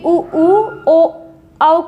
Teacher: उ ओ औ के उच्चारण में होंठ गोल हो जाते हैं। तो 4 स्वर ये आपके वृत्ताकार हो जाएंगे।